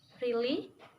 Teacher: And to sound annoyed, the tones are lower. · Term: rising falling tone